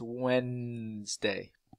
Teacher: And Wednesday, we don't pronounce this D, it's Wednesday.